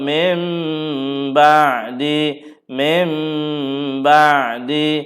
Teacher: Iqlab. Okey, nun mati ditukar kepada mim. Mim tutup mulut.